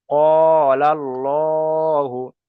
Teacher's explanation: যদি জাবার আর পেশ আসে তাহলে আল্লাহ শব্দটাকে পুর করে পড়তে হবে, আর যদি জের আসে তাহলে বারিক করে পড়তে হবে।